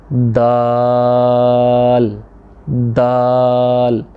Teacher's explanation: ज़ुबान की नोक को सनाया उलिया यानी कि जो सामने वाले ऊपर वाले दो दांत हैं इनकी जड़ में लगाना है।